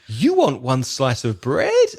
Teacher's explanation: he goes up at the end that becomes a question · But because your intonation was so like a question, you want one slice of bread, and it goes up at the end, that becomes a question